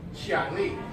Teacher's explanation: Second tone, fourth tone. Up, then down. Kind of flows more naturally if you're not a native speaker.